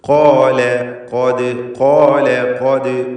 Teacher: അപ്പോൾ ഖാല ല ല എന്ന തർക്കീഖിൻ്റെ ശബ്ദം ലാമിന് വരണം, ലാമിന് തഫ്ഖീമായി പോകരുത്. · ഖാല എന്ന് പറയുമ്പോൾ ഖാഫിനും അലിഫിനും തഫ്ഖീമാണ്, ശേഷം ലാമുണ്ട്.